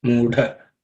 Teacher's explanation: So the fourth letter, da, it has to be aspirated. So pay attention to that. So it's extra air and some little bit of extra stress.